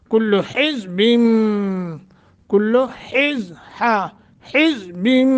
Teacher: نون تنوین کے بعد با ہے تو نون تنوین کو میم سے بدل کر پڑھیں گے